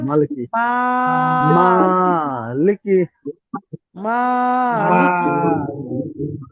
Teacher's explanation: কাফের নিচে জের হারাকাত তাড়াতাড়ি পড়া টান দেওয়া নিষেধ।